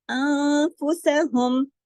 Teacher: नून साकिन के बाद फा है, इख्फा हकीकी, हुन्ना कामिला है